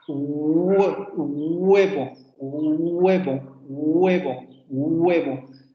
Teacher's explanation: Redondeamiento de labios y el dorso de la lengua echado hacia atrás. Por eso se llaman coarticuladas, porque articulamos con la parte frontal de la boca y la zona dorsal de la lengua que se va hacia la zona del velo de la boca.